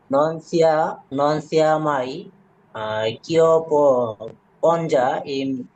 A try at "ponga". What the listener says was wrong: পঞ্জা না, এটা হবে পনগা। জি অক্ষরের উচ্চারণ জির সাথে আ থাকলে গয়ের মতো উচ্চারণ করবে।